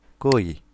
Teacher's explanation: কটা কিন্তু অল্প বাতাস, যখন তুমি উচ্চারণ করবে মুখ থেকে কিন্তু অল্প বাতাস বের হবে